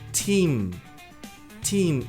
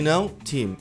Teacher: Tem até que dar um sorrisinho para pronunciar esse i longo, como se tivesse empurrando pra frente esse esse som de team.